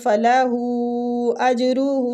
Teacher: فلاح میں جو مد ہو رہی ہے، مد جائز منفصل ہو رہی ہے، تو اس کی مقدار کھینچنے کی بھی 3 الف ہے